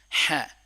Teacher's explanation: گلے کا درمیانی حصہ، ح، ح، نہایت ہی نرمی سے